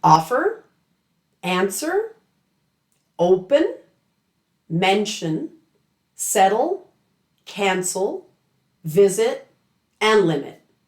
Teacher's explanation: you know the stress will be on the first syllable